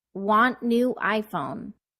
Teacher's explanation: here I stress the verb adjective and noun and said each of them nice and clearly on the beat